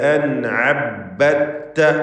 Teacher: അൻഅബ്ബത്ത സാക്കിന നൂനും ഐനും ഇൽഹാർ ഹൽഖി മണിക്കാതെ വെളിവാക്കുക നൂനിനെ